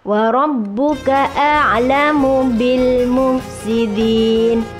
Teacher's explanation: Wa rabbuka, roknya tafkhim mufakhom ya, berharokat fathah.